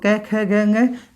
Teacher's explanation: कंठ का उच्चारण स्थान कंठ किसकिस का उच्चारण स्थान है तो क वर्ग का है उच्चारण स्थान क पूरे वर्ग का तो क ख ग ंग इन सब का उच्चारण स्थान क्या आ रहा है कंठ